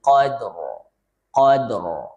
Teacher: Kemudian rnya juga disukunkan saat waqf lailatil qadr. Qadr jadi tebal bukan fi lailatil qadr tipis qadr ya.